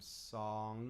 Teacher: It closes things off. And when you make the sound song, your voice and the air used to create your voice, it actually goes up into your nasal passage. That is a nasal sound.